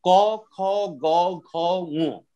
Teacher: উচ্চারণ স্থান হচ্ছে কণ্ঠ, কণ্ঠ বর্ণ।